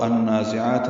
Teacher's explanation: ادغام شمسی مع الغنہ ہے، آواز ناک کے بانسے میں لے جائیں گے۔ نون کو 2 حرکات لمبا کرنا ہے، ذات صفیر کی آواز سے جلدی اور معروف پڑھنا ہے۔